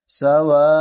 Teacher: واو الف مد زبر وا، 4 الف تک ہمیں کھینچنا ہے